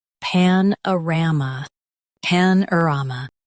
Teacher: Stress ram and keep pan light. Uh is soft.